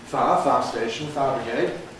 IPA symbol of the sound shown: faə̯